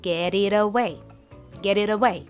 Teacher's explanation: She says get it away from me. Again, the T sound in get and it turns into a quick soft D sound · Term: flap t sound, flap T sound